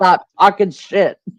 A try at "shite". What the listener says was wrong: shite, shite, not shit.